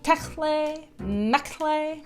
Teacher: I'm pretty sure the T's in the middle are silent